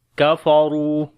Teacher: کاف کو باریک پڑھیں گے، را کو موٹا پڑھیں گے ، اس کے اوپر پیش ہے، اور یہاں پر اب واو